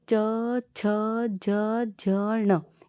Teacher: च वर्ण जो होते हैं तालव्य वर्ण होते हैं। तालव्य वर्ण यानी कि जो आपके ऊपर वाले दांत हैं, दांतों के जो ऊपर वाले दांतों के जो पीछे का जो हिस्सा है कठोर हिस्सा जो है वो होता है तालव्य।